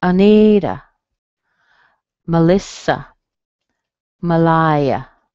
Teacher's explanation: Schwa in the beginning, strong in the middle, Malaya, Malaya.